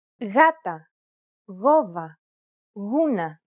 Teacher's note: when it precedes an A, O, or U, however, it's pronounced like a loosely held G sound.